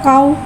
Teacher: वाव साकिन है, वाव साकिन से पहले ज़बर आ रहा है, वावलीन हो रहा है, लिहाजा वावलीन को बगैर खींचे बगैर झटके दिए नरमी से मारूफ पढ़ेंगे